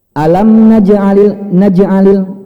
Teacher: Qalqalah dikatakan kecil, pantulan kecil ketika di tengah bacaan.